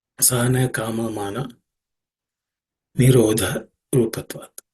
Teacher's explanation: In terms of pronunciation, the last word has one aspirated consonant, which is nirodha. The dha in the nirodha is the only aspirated consonant.